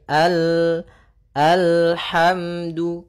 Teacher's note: sempurnakan makhraj daripada lam, ujung lidah naik melekat dengan langit-langit atas